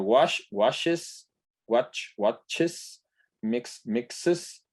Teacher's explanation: solamente alargar la s es todavía muy raro que es entonces es necesario que yo agregue una sílaba para que se escuche esa s